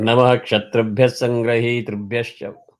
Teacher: wherever there is a Visarga followed by ksha, there is no substitution there. You have to chant the Visarga as is.